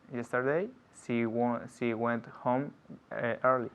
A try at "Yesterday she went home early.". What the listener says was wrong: Not home early. Home early. I'm linking the words, yeah? Because that's how we speak. We speak linking words all the time.